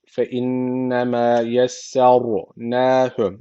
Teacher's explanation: ra harfi cezimli öncesindeki harf üstten bağlanmış. Cezimli ra kalın okunacak. Yesesser neü h uzatmıyor arkadaşlar.